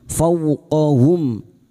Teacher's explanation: fau fathah bertemu wau sukun kita lunakkan huruf lin fauqohum. Mim sukun bertemu kaf idhar syafawi. · Mim sukun bertemu kaf idhar syafawi. Mim sukun dibaca jelas tanpa mendengung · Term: idhar safawi